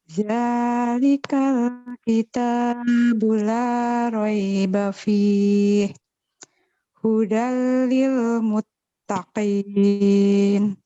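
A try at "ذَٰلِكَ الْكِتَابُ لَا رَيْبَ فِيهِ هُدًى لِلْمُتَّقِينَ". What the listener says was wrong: Ya, catatannya kepanjangan mat tabi'inya. Jadi bukan dalikal kitabu la raiba fihi. Dalikal kitabu la raiba fihi. Jadi panjangnya da, kita, dan la itu hanya 2 harokat.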